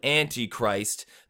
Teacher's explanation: in the middle of Antichrist there's a little unstressed syllable in there